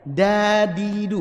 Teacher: Dadidu, enggak ada kena gigi sama sekali itu. Murni langit-langit atas kan? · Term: D-nya orang Indonesia